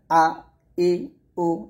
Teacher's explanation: হচ্ছে তা মাখরাজ গুলো খেয়াল করুন হামজাটা হবে হলকের শুরু থেকে হলকের শুরু থেকে আপনাকে হামজার উচ্চারণ করতে হবে